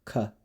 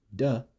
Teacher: if an unvoiced K sound, K, is next to a voiced D sound, D, the K will match its voicing with the D, becoming a G sound instead.